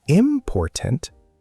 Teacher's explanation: if you said important, stress on the first syllable, it sounds strange, wrong. Native speakers might not understand immediately.